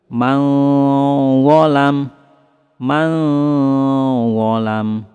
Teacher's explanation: Kemudian huruf dha merupakan huruf tebal, maka suara samarnya lebih ditebalkan.